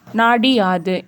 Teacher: அப்படிங்கறது வந்து நிலைமொழியின் ஈற்றில் குற்றியல் உகரம் அமைந்து வருமொழியினுடைய முதலில் எகரம் வந்தால் அதோட இறுதியில வந்து வருகிற உகரம் வந்து இகரமாக தெரியும் அதாவது உதாரணத்துக்கு நாடு கூட்டல் யாது நாடி யாது இங்க டூ அப்படிங்கறது வந்து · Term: குற்றியல் இகரம்